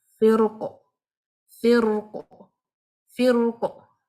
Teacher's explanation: If you stop in the middle of the ayah on this word, then this qaf will not be taking a haraka because you will be stopping, and due to stopping you will turn this qaf into sakina. Therefore, ra sakina having a kasra before it followed by heavy letter, this ra will be read heavy now.